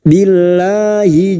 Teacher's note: lam jalalah yang didahului kasrah kita baca tarqik atau tipis